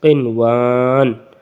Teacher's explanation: الف مدہ کو وقفن میں کھینچ کر پڑیں گے جو سیکنڈ لاسٹ پہ ہے اس لیے، قنوان وقفا، قنوان۔